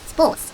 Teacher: 그 중에 하나가 바로 P입니다. 앞에 S와 만나면 우리나라 쌍비읍으로 발음이 납니다. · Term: 된소리